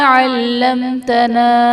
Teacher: علمتنا میں میم ساکن کے بعد حرف با اور میم کے علاوہ تا ہے تو یہاں پر اظہار شفوی کا قاعدہ ہوگا، یعنی میم ساکن میں ہم غنہ نہیں کریں گے۔